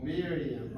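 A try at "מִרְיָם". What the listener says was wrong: Miriam, there's no vav there after the mem.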